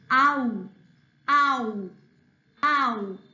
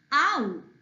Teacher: oh and uh they join together and they make the sound okay open your mouth wide and say ow